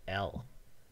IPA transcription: l